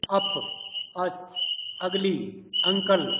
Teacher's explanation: It is articulated with the center of the tongue raised to the point nearly halfway between open and half open position. Lips are neutrally open with a considerable separation of the jaws. · Lips are neutrally open with a considerable separation of the jaws. It is a central unrounded between open and half open. It is a short vowel